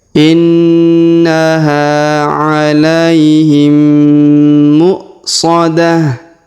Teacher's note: Maka dibaca muqsadah, bukan mu'sadah, tapi muqsadah. Kemudian ta marbutah yang di ujung kita rubah menjadi ha sukun